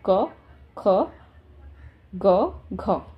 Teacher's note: अब का वर्ग का क्या है, जीभ का जो पिछला हिस्सा हमारा है वो कंठ के क्या है, अगले भाग से टच हो रहा है.